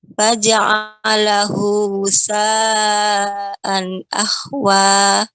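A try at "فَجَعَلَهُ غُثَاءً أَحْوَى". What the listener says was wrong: Ya, ghain. Ghain. Faja'alahu ghutha'an ahwa.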